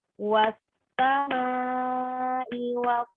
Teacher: Terus ketika kita menyebutkan huruf sin, was sama wal qariq. Huruf sin ini dia punya sifat yaitu sofir. Yang dimana kalau kita baca sofir, sofir itu kan artinya mendesis ya. Nah, jadi harus kita tahan sedikit.